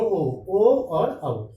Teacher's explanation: दोनों ओ और औ, और इनका उच्चारण स्थान कंठोष्ठ,